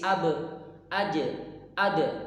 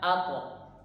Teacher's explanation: Untuk ba, jim, dal ini mantulnya ke tipis, ab, aj, ad. Tapi untuk huruf to sama huruf qaf ini mantulnya ketebal dia ya. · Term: qalqalah